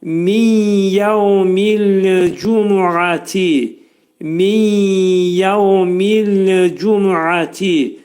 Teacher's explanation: Bu sözü dedikdə nun hərfi yəyə çevrilir. İdğam mə'al gunnədir.